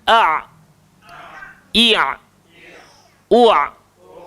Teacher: Jadi dia tidaklah keluar dekat hidung, tidak pula dia tebal Jadi sebutan ain ni keluar dekat tengah tekak. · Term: huruf Ain